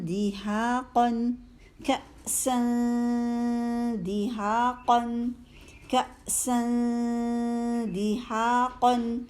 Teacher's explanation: دال آ گیا تھا آگے تنوین کے بعد، تو دال کے مخرج کے قریب جا کے باریک اخفاء کیا۔